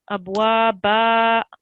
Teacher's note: the tanween comes off. Abwaba, but it's still elongated for 2 seconds.